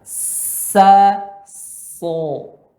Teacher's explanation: Sa dan so sama tempatnya, namun pada so pangkal lidah naik, kedua bibir agak sedikit ke depan.